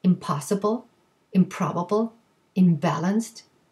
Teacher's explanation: p and b and both of them are bilabial okay so the p or the b triggers the m sound so the p is bilabial right if you say p that's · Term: assimilation